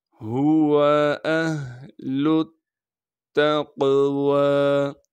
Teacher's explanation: حمزہ کو ہا سے ملائیں گے کیونکہ ہا ساکن ہے، اسی طریقے سے لام کو تا سے ملانا ہے کیونکہ تا پر تشدید ہے، تشدید ہونے کی وجہ سے تھوڑا سا ٹھہراؤ رکھیں گے۔ پھر تا کو ہم قاف سے ملائیں گے کیونکہ قاف ساکن ہے، قاف کو موٹا کر کے پڑھیں گے، اور قاف پر ہم قلقلہ بھی کریں گے۔